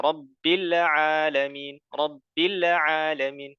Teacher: Al-alamin dilarang memantulkan huruf lamnya.